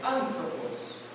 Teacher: ela tem um acento tônico na antepenúltima sílaba, e o restante da palavra era falado de forma fluida